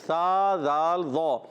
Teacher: سا کا مخرج جو ہے زبان کا سرا اوپر کے دانتوں کے کنارے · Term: حروف السویہ